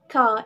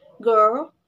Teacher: these consonant sounds are produced when the back of the tongue touch the soft palate or vellum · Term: Velar sounds